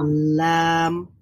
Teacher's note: জিহ্বার অগ্রভাগ সামনের সানায়া থেকে দওয়াহিক পর্যন্ত সবকটা দাঁতের গোড়ালির সঙ্গে লাগিয়ে উচ্চারিত হবে লাম।